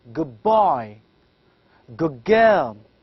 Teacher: what we actually do is we shift d into g. So it becomes as good girl. · instead of saying da, in fact, we pronounce it as ba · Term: assimilation